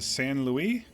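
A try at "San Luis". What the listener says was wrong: Louie would be more of the French pronunciation of that, whereas Louise is going to be the uh Hispanic Mexican pronunciation of that same thing.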